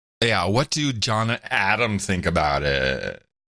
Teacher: You got the vocal fry in there.